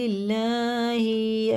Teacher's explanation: اللہ کا لام زیر سے ہے تو باریک پڑھا جائے گا